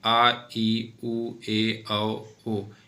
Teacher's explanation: इनके उच्चारण में ह्रस्व से दोगुना समय लगता है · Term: द्विमात्रिक गुरु